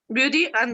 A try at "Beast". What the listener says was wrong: ¿Cómo que de beach? De beast. De beast.